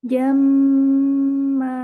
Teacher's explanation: Dibaca gunnah dengan kadar 2 harokat